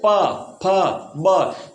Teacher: होठ को मिला करके जो वर्ण बोले जाते हैं वो ओष्ठ्य वर्ण कहलाते हैं।